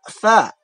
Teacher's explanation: Kalau tha itu dari ujung lidah dengan ujung gigi yang atas